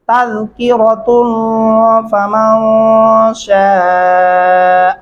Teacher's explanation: اگر آپ وقف نہیں کرتے تو پھر یہاں پہ آپ نے غنہ بھی کرنا ہوگا اور اس شین کو لمبا کرنا ہوگا 4 الف کے برابر تک